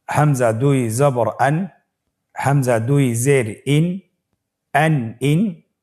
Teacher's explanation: তানবিনটি আসলে বাংলা আমরা যেভাবে দন্ত ন উচ্চারণ করি, অন্য শব্দের সাথে কানেক্টেড করে সেভাবে উচ্চারণ হবে।